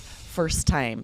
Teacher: We're not going to pronounce both of those T's.